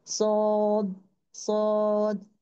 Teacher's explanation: मेरा टंग को है ना डिप कर रही हूँ, पीछे से रेस कर रही हूँ मैं, होठ सेम है लेकिन मेरा टंग के वजह से जो है हैवी आ गया है।